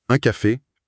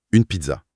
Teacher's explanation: On entend bien la résonance nasale d'un côté et l'articulation palatale de l'autre.